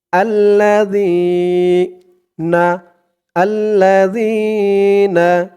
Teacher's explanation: পাতলা করতে হবে জিহ্বার মাথা উপরের দাঁতের মাথার সাথে লাগবে জালের উচ্চারণটা করার সময়